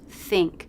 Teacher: I tend to make the I more of an E sound when it's followed by the NG consonant. Think. It's sort of a mix between E and I.